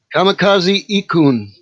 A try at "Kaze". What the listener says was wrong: No, it doesn't say kamikaze. That says Kaze. Kaze.